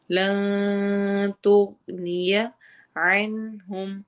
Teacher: عین حروف حلقی میں سے ہے، نون کی آواز یہاں بالکل کلیئر ہوگی